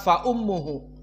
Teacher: Fa ummuhu ada dua harakat tidak cepat Fa ummuhu maka mim jika ditasdid kan wujubul gunah makhrajnya pindah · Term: mim musyaddadah